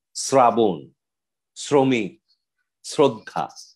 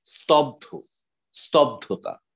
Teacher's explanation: স এর মূলত উচ্চারণটা এসএইচ হলেও কোথাও কোথাও কোনো কোনো বর্ণের সাথে যুক্ত হয়ে এই বর্ণের উচ্চারণ প্রবণতাটা এস এর দিকে ধাবিত হয়ে থাকে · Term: এস উচ্চারণ